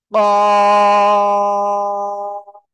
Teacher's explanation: জিব্বার গোড়া তার বরাবর উপরে তালুর সাথে লাগাবো, লাগিয়ে মোটা আওয়াজে আমরা চার আলিফটা নিয়ে উচ্চারণ করব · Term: কফ